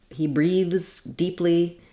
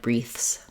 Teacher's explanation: when the th comes at the end this is where you may have an error of devoicing